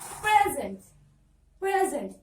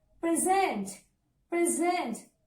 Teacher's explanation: If it is a verb, you have to stress on the zent.